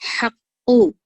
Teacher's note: قاف کو موٹا پڑھیں گے آپ، اور پھر بغیر کھرکھراہٹ کے، بغیر خ والی آواز یہاں پر نہیں آئیں گی۔